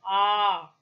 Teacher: to mark it so this is a long sound ah okay when this sound is articulated the back part of the tongue is fully open that is it does not go towards the heart